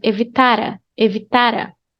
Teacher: Link the R with the A. It's like one word.